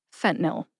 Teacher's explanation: I kind of skip that middle syllable